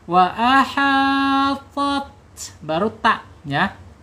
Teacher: ta ini huruf tebal ya. Huruf isti'la. Kenapa bisa tebal? Karena lidahnya terangkat gitu.